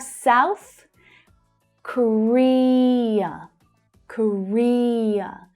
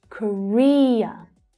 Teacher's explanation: So that's the second syllable that's stressed there.